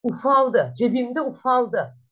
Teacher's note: Ufak kelimesinin sonundaki K unsuru düştü. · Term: ünsüz düşmesi